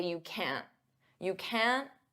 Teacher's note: native speakers often pronounce t as a flap T which means we don't push out that puff of air